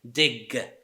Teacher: So dig, it ends with velar voiced consonant, g.